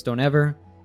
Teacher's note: dropping the T and don't so it becomes don't ever